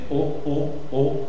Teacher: c'est une voyelle orale et postérieure, mi-fermé, d'accord, et après arrondi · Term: O fermée